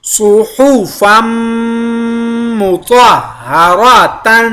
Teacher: تنوین کے بعد میم شدہ کے اوپر لازمی غنہ ، اور یہاں پہ طا اور را کو پر ادا کیا،